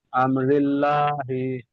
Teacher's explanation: রয়ের নিচে জের এসছে, জেরটি হলো হারাকাত, হারাকাতের পর তাড়াতাড়ি করতে হয়, টান দেওয়া নিষেধ। আল্লাহুল লামের ডান দিকে জের এসছে, তাই আল্লাহুল লামকে বারিক করে পড়তে হয়। লামের উপর তাসদিদ এসছে, তাসদিদ বলা অক্ষরকে দুবার পড়তে হয়, একবার ডান দিকের অক্ষরের সঙ্গে মিলিয়ে আর একবার নিজে নিজে।